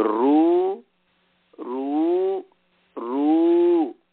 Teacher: दक्षिण भारत में वो कहते हैं रू, महाराष्ट्र और दक्षिण भारत में री को रू कहते हैं। तो रू रू रू ऐसा।